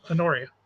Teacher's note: you put the emphasis on the second syllable